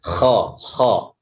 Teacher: Isti'la, yaitu terangkatnya pangkal lidah kha ya. Kemudian selanjutnya yaitu infitah, terpisahnya lidah bagian depan dari langit-langit.